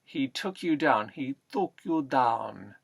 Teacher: We take the T's and D's and we put them especially in the front teeth